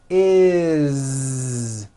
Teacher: It's never is, unvoiced, never. It's always is with a voiced Z.